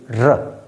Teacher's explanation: जब हम र को बोलेंगे तो हमारी आवाज आएगी र तो हमारी जीव हल्के से हिलेगी तो इसे होते हैं र यह होता है लुंठित व्यंजन अब